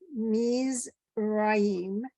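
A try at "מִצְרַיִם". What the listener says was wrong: Almost. Remember the tsa, yeah, meets.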